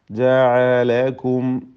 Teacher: ഇതിൽ വന്ന സാക്കിന മീം ഇൽഹാർ ഷഫവിയാണ്, മണിക്കാതെ വെളിവാക്കുക.